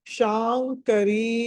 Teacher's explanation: శ తర్వాత అనుస్వారము తర్వాత క ఉంది కాబట్టి పంచమాక్షరం అనాలి